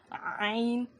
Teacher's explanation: ہا اور عین کا مخرج سیم ہے, مگر جب ہم ہا ادا کرتے ہیں نا تو ہماری آواز باہر آتی ہے, مگر عین میں آواز ہوا باہر نہیں آتی. عین ایسے دبا کر پڑھیں گے.